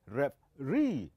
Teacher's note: So the last syllable, it is the one that will be heard louder comparing to the other. And so we call this as a stressed syllable.